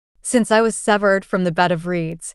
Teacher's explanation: 5 iambic feet, 10 syllables, alternating unstressed and stressed, per line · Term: iambic pentameter